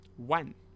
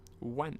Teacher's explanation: Wan, fourth tone. Wan, meaning 10,000.